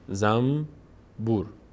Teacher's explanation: ما میگیم زنبور، اصلا کلا نون تلفظ نمی کنیم، میم تلفظ میکنیم. زنبور بعد از نون ب اومده، زنبور، درسته؟